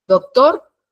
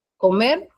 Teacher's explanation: se carga la voz en la última sílaba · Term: acento prosódico